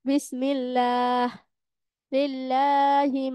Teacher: আল্লাহ শব্দের ডানে যদি জের থাকে তাহলে বারিক তথা পাতলা করে পড়বো